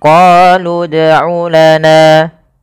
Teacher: Awalnya misalkan qalu itu panjang, tapi karena bertemu dengan huruf sukun, maka huruf yang panjang tadi menjadi pendek dan kita matikan langsung kepada huruf yang dia berharokat sukun.